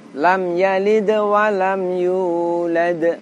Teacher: cara membacanya selain ditekan juga dipantulkan · terdapat dal sukun, di mana cara bacanya kita tekan dan kita pantulkan. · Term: huruf Qalqalah